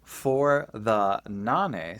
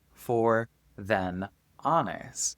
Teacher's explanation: many speakers heard that /n/ at the end of þen as belonging to the word ānes instead of þen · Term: rebracketing